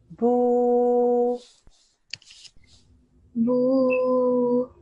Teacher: But because straight afterwards there is this waw with sukoon, that is a waw madda. So the bu gets stretched out for 2 seconds.